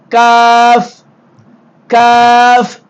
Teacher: மேல் முரசியில் ஒட்டுகிற பொழுது காஃப் காஃப் வெளியாகும் அதற்கு சற்று முன்பதாக உள்ள நாவு மேல் முரசில் ஒட்டுகிற பொழுது காப் காப் வெளியாகும்